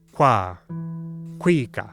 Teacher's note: a tricky qu made by rounding your lips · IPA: /kw/